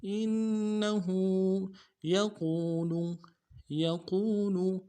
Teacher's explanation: انه یقول، یقول، یا کو نون سے ادا کریں گے، قاف کو موٹا کرنا ہے، واو کے ساتھ ملائیں گے، واو مدہ ایک الف دال میں کھینچیں گے، لام کو نرم سے ادا کریں گے.